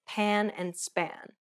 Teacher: Note how there is a burst of air in the first P, but none in the second.